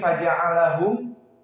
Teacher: faja'alahum semuanya muraqqaqah, fa muraqqaqah, jim muraqqaqah, ain lam ha wal mim. Maka datar.